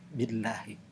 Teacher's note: lamnya itu dibacanya adalah tarkik, yaitu tipis